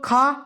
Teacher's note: खा, ये तो कंठ से बोली जाती है